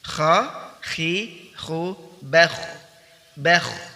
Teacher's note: ar-rakhawah, bunyinya keluar ya. Bunyinya dialirkan, dialirkan. · Perhatikan, selain huruf isti'la, kha ini juga memiliki sifat al-hams, yaitu udara atau nafas dialirkan ketika mengucapkan huruf kha. Kemudian juga ar-rakhawah, bunyinya keluar ya.